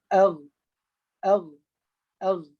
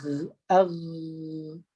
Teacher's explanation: huruf Ghain, dia tidak mengeluarkan angin tetapi ada macam geseran.